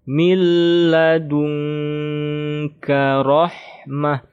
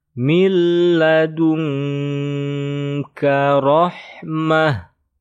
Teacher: Kalau nun sukun bertemu ka, ikhfa. Kalau nun sukun bertemu la, idgham bila gunnah. Kalau idgham bila gunnah, tasydidnya tidak digunnahkan. Kalau ikhfa, ya didengungkan.